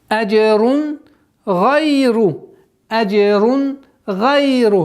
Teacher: Правило изхар, ясное произношение. Танвин, после которого идет гайн, гортанный звук, четкое ясное произношение, без никаких изменений.